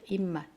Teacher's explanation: 비읍이 미음으로 바뀌는 거